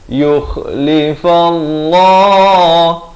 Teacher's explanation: Lafz jalalah ni dibaca tebal, dua harakat.